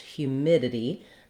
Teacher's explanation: So humid, the mid syllable is stressed, humidity. That means that's going to be longer. It's going to have the clear I vowel.